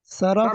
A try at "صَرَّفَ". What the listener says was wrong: صرفا صرفا، نہیں شد کے ساتھ، صرفا.